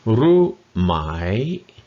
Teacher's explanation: And the second tone on my, or on my, rising. So it's rising, it's a high tone for Ru, rising on my.